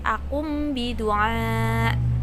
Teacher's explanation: Tetapi ketika ada nun sukun bertemu dengan huruf ba, ini adalah iklab, maka ba-nya dimasukkan menjadi mim